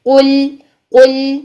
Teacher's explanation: नहीं करेंगे मुंह भर के लाम को अदा नहीं करेंगे बल्कि कफ को मोटा करने के बाद लाम को बारीक कर देंगे · اس میں قاف موٹا ضرور ہے لیکن لام کو موٹا نہیں کریں گے، قل نہیں کریں گے، منہ بھر کے لام کو ادا نہیں کریں گے، بلکہ قاف کو موٹا کرنے کے بعد لام کو باریک کر دیں گے. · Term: لام باریک